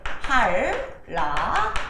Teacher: 니은이 리을 만나면 리을이 되는 유음화